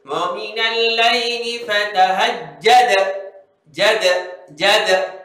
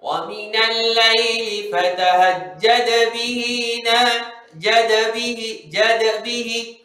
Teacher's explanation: Beza dia apabila anda baca wa minal lail, kalau anda berhenti dia akan jadi qalqalah kubra. Jadi bunyi dia kuat sikit.